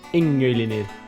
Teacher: the nasal of the prefix assimilates to the place of articulation of the word initial consonant